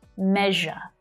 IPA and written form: 'meʒə (MEASURE)